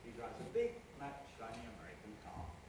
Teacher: I'm going to step down every time I come to a stressed syllable. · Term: stepping head